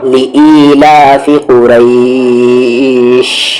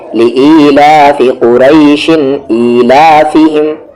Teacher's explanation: رکنے کی وجہ سے کھینچ رہے ہیں, مد عارض ہو رہا ہے